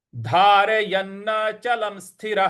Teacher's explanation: अगला पद है धारयन्न चलम स्थिर। यहां ल के ऊपर जो अनुस्वार है उस पे म का उच्चारण ले आएंगे।